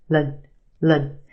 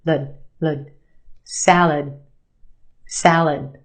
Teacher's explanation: The second syllable is our schwa. Lud. It's said very quickly, and we have that sound.